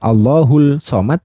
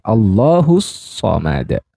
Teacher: Jadi dileburkan bunyi lam sukunnya terhadap huruf syamsiyah. Jadi pasti ada tasydidnya. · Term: alif lam syamsiyah